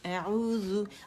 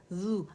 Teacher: زبان کی نوک جسٹ آپ لوگوں نے ٹچ کرنی ہے، کہاں؟ جو سامنے کے ثنائے علیہ ہے، اوپر کے 2 دانت، اس کے سروں کے ساتھ. زو، اگر آپ زو کریں گے نا، زیادہ زبان باہر نکالیں گے یا زبان کی جڑ اٹھا لیں گے، زبان اٹھا لیں گے، تو ذال موٹی ہو جائے گی. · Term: ذال باریک